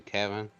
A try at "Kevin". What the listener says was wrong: Oh, Kevin with an A. You're saying Kevin with an I.